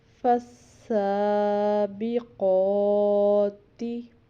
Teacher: یہاں پر بھی سین پر شد تھا تو پچھلے والے حرف کے ساتھ ملا کے اس کو پڑھا، سین اور قوف کے اوپر کھڑی زبر تھی، ان کو 2 الف کے برابر لمبا کیا